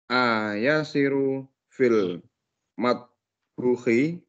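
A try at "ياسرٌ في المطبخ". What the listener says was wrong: Matbakhi. Yasirun. Yasirun. Ya, nama Yasir pakai tanwin belakangnya ya. Yasirun fil matbakhi.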